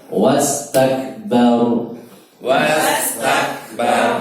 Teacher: tidak boleh mantul tapi hamas